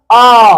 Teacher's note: आ का उच्चारण स्थान बहुत गहरे में हो रहा है। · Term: पश्च स्वर